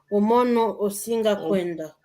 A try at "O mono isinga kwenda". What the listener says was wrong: Não é o singa, não. O mono e singa kwenda. O mono e singa.